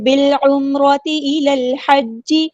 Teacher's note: با کو ہم لام کے ساتھ ملا دیں گے، حمزۃ الوصل ہمارا ڈراپ ہو جائے گا